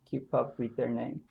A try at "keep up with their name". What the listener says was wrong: And again, keep up with their name should be a little bit more connected and chunked. It just feels slightly separated. Keep up with their name.